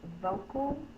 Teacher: this is the unstressed syllable so it can say the uh sound and it's represented in this word with the a